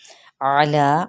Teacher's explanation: आइन को वस्ते हल्क से अदा करेंगे